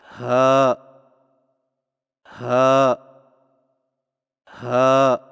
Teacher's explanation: زبان کی جڑ کو حلق کی طرف دبائے بغیر باریک اور بغیر رگڑ کھاتی سانس میں پڑھیں